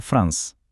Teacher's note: Последното е не го изговараме. Едноставно велиме франс.